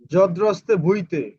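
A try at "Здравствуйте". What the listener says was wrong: না এটা ভ উচ্চারণ করা যাবে না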